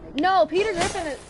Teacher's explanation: peter griffin is nasally so you have to talk through your nose a little bit